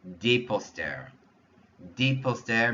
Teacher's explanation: Notice, I'm not even pronouncing those S sounds, but because I'm saying des, I know it's plural.